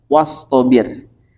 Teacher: huruf shad itu huruf istila huruf yang terangkat pangkal lidahna ka luhur